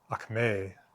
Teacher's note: root accent is on the second syllable there